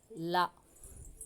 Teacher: நாவின் இரு பக்கங்கள் தடித்து மேல் பற்களின் அடியை தொடுவதால் லகரம் தோன்றும் இரண்டு பக்கங்களின் அதாவது நம்மளுடைய நாக்கு வந்து தடிக்கும் சரியா லா அப்ப வந்து